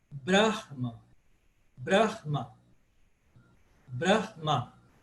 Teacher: Ele é paroxítono, só que eu tenho que alongar um pouquinho esse A do final para diferenciar, por exemplo, de um A fechado.